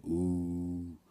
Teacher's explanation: pronounced as a prolonged oo, with the sound gradually rolling forward along your upper palate